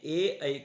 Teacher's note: ए ऐ का उच्चारण स्थान कौन होता है कंठ तालू होता है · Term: संधि स्वर